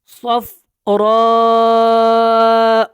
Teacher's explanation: را کے اوپر مد متصل ہے اور اس کو آپ نے کھینچ کے پڑھنا ہے اور صاد کو پر پڑھنا ہے